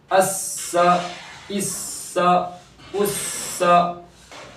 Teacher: حرف صفریہ ہے تو اس میں سیٹی جیسی آواز بھی نکلنی چاہیے